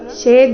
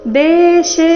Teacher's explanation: ಶೆ ದೀರ್ಘ ಬಂದು ಅದರ ಮೇಲೆ ಆಘಾತ ಬರಬೇಕು